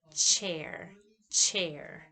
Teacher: It's voiceless palatal affricate.